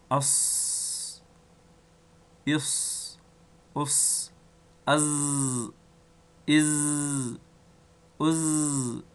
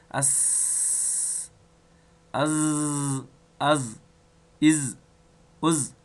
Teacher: صفیریه ځکه ورته ویل کیږي چې د دغو درو حروفو د اداینې په وخت کښې اواز د خولې څخه د شپېلکي په شان راوځي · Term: حروف صفیریه